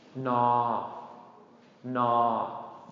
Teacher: Pretty easy, just N, na, na, na, long mid-tone, na.